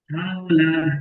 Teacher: ওয়াও সাকিনের ডান দিকে জবর এসে, ওয়াওলিন। ওয়াওলিনকে নরম আওয়াজে পড়তে হয়, তাড়াতাড়ি টান দেওয়া নিষেধ। জি, ওয়াউলিনকে সর্বদা নরম আওয়াজে পড়তে হয়, টান সর্বদা দেওয়া নিষেধ।